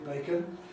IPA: ˡbeɪkən